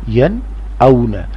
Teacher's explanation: پڑھیں گے انعمت بتا، انعمت یا نون زبر ین، حمزہ واو زبر او نون ساکن کے بعد حروف حلقی میں سے حمزہ ہے، اس لیے نون کی آواز ناک میں سے نہیں آئے گی، نون کی آواز میں اظہار کرنا ہے۔